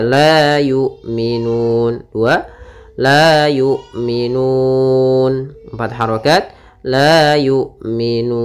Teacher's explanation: panjangnya boleh 2 harakat, boleh 4 harakat, dan boleh 6 harakat. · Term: mad arid disukun